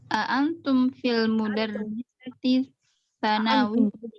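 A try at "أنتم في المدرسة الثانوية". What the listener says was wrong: أنتم في المدرسة الثانوية. Nah, hati-hati tulisan ini bisa dibaca madrasah, bisa dibaca mudarrisah. Nah, kalau antum fil mudarrisah bahaya ya.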